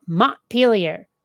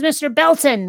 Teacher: the sort of glottal stop in place of a T that most people from New England have